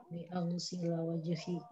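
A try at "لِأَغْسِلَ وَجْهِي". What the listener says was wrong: Disambung. Li aghsila itu disambung.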